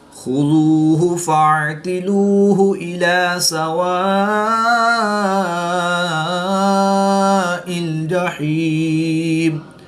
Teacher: عین حروف حلقی میں سے ہے، اس کو حلق کے درمیان سے ادا کریں گے